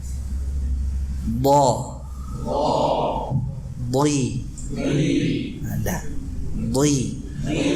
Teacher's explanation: Jadi karena makhrajnya di samping, bukan di ujungnya. Makhrajnya ini di pangkal, dari pangkal sisi lidah, ya, pangkal sisi lidah.